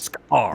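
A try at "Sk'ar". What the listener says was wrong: You need that. You need that glottal stop after the K.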